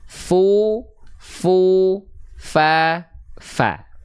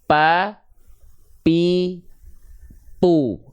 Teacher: pastikan dia mengalir nafasnya dan jangan sampai seperti huruf P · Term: huruf Fa